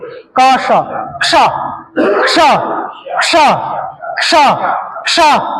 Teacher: का और शा को मिलाकर के बोलोगे क्या बनेगा? क्ष।